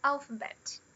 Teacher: quando falo alphabet, é bem claro que esse final ele é mais forte do que o meio. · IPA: /ˈælfəbet/